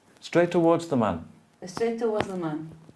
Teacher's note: The first T is disappeared.